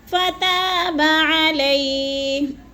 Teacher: جیسے کلمات فتاب، فتا میں جو ہے الف مدہ ہے، علیہ، علیہ یا لین ہے، یا ساکن سے پہلے ہم لام کے اوپر زبر ہے تو ادھر یا لین کو لمبا بھی نہیں کرنا اور جھٹکا بھی نہیں دینا